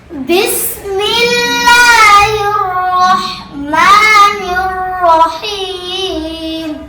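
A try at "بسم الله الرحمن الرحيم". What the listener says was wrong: এটাকে আরেকটু high scale বাড়াতে হবে। দেখেন, বিসমিল্লাহির রাহমানির রাহিম।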